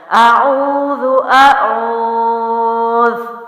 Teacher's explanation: واو مد ہے اس لیے میں نے اس کو او کو لمبا کیا